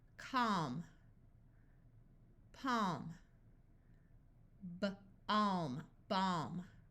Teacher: a l before an m so the a will have the broad a sound of a and the L will be silent